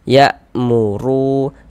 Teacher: Jadi huruf ra kalau dia memiliki harokat dhammah atau harokat fathah ya, maka huruf ra-nya itu dibaca tebal, dibaca tafkhim ya, sehingga pangkal lisan kita, pangkal lidah kita itu ketika kita mengucapkannya itu dia naik terangkat ke atas